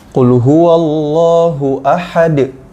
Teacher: Kalau Bapak sekalian mau wakaf atau berhenti di sini di ayat yang pertama, jadi dal nya ini jadi qalqalah kubro.